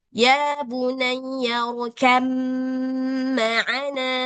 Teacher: Langsung dianggap si ba ini nggak ada, langsung masuk ke mim.